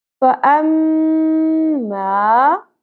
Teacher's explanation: میم مشدد غنہ ہوگا، ناک میں آواز کو ٹھہرانا ہے